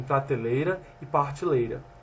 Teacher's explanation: Realização da líquida R em posição intervocálica e monotongação do grupo fônico E